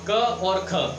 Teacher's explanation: क में कम हवा निकल रही है, तो ये क्या है आपका अल्प प्राण है। क्या कैसे क, और आप उसके बाद तुरंत बाद बोलोगे ख तो ख में ज़्यादा हवा निकल रही है।